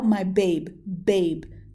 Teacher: that hard B sound is definitely a stressed, and my is definitely an unstressed